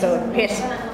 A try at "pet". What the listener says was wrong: Pet. No S. Pet.